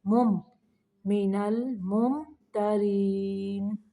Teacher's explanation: یہاں پہ میم کو صرف ظاہر کرنا ہے، مم لمبا نہیں کرنا